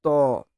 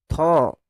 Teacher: জিভের ডগটা উপরের দাঁতটাতে ছোঁয়াচ্ছে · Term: দন্তব্যঞ্জন